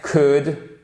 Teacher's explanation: On ne prononce pas le « L », hein, c'est exactement comme dans « pourrait »,« could »